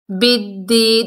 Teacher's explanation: یا ساکن سے پہلے زیر ہے، یا مدہ ہے، ایک الف کی مقدار کھینچ کر پڑھیں گے